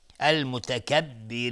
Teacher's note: المتکبرین را ترقیق است چون کسره داره